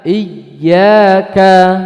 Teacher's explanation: Jangan memanjangkan i-nya, tapi ya-nya ada hentakan.